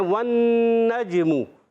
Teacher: ٹھیک ہے، اب واو پر زبر آ گئی، واو کی زبر نون سے ملے گی، نون مشدد، ذرا رک کر ادا کریں گے، غنہ بھی کریں گے. نون مشدد میں ایک الف کا غنہ ہوگا. نون کو جیم سے ملائیں گے، جیم ساکن ہے، حرف قلقلہ میں سے ہے.